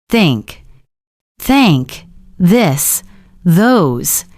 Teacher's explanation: Now say them again, paying attention to your tongue and teeth. The th sound is soft. Your tongue goes between your teeth.